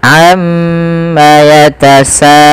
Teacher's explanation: kita harus memanjangkan bunyi sa sepanjang 4 atau 5 harokat dan tidak boleh dikurangi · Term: mad wajib muttasil